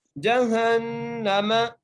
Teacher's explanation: ہا کو نون سے ملانا ہے، نون پر غنہ کرنا ہے